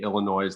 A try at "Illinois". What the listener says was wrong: you pronounce the S? Do you normally pronounce the S?